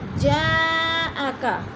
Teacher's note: جاءکا، جا میں مد متصل ہے، حروف مدہ کے بعد حمزہ ایک ہی کلمے میں آ گئے تو ادھر مد متصل 4 الفی مد ہے، 4 حرکات کے برابر ہم نے اس کو لمبا کر کے پڑھنا ہے